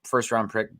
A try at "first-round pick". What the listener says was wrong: You said something else. No, you said first round pick, but you put an extra R in there somewhere.